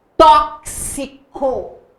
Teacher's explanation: Tá vendo que você fala o K, o som do K e o som do S.